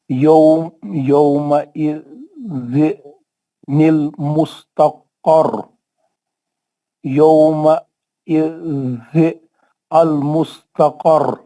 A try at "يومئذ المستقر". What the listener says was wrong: نہیں یومئذ نہیں پڑھ سکتے اب آپ، زیر نہیں پڑھنا. روکے تو آپ اسٹاپ کرے تو زیر نہیں پڑھنا.